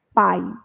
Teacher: isso precisa de ter uma noção de som por exemplo pai o i quase não não aparece no som dessa palavra a gente tem quase que o som predominante do a e o i praticamente desaparecido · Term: semivogal